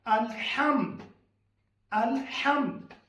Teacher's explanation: हा, हलक के दरमियान वाले हिस्से से।